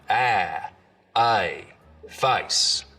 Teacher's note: the diphthong in face starts real low down around ah hey face so here is one where the beginning